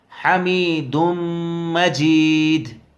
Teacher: یہاں دال کو میم میں ملائیں گے، دال میم پیش دم